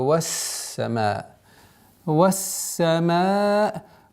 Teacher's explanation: И нужно ясное, четкое произношение огласовки хамза после удлинения. · Согласовки фатха мы переходим на удвоенный син. Удерживаем, так как у звука син имеется свойство свист, и нужно удержать немножко.